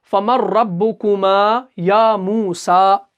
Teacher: میں نے ابھی اس سے پہلی والی مثال میں بتایا، لام، را اور نون جو ہے یہ ایک ہی جگہ سے نکلتے ہیں، تو قریب المخارج ہے، نون اور را جو ہے یہ ایک ہی جگہ سے نکلتے ہیں